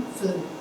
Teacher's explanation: my upper teeth is touching my lower lip during the production of this particular sound F.